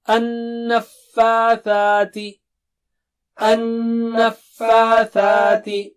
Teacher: یہاں پر غنہ ہوگا double stretch ہوگا یعنی غنہ یعنی ناک سے آواز اور دو سٹریچ. فا میں مد ہے اور ثا میں مد ہے.